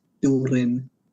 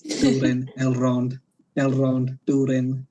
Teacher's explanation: in the show, for every R, they do a rolled R because it's Tolkien was inspired by Welsh, and in Welsh you have rolled R, so it's like Durin.